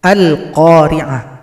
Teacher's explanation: Perhatikan pada ayat pertama lamnya dibaca jelas, ada tanda sukun. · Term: alif lam qomariyah